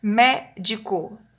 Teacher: é a antepenúltima sílaba tônica, então é proparoxítona. Médico, acento no mé.